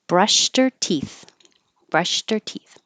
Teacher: we can get rid of the H and her and now connect it · In this case, brushed by itself would sound like a T, brushed. And we can get rid of the H in her and now connect it, and it sounds like brushed her.